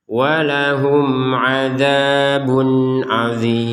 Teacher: mim sukun bertemu ain, dibaca dengan jelas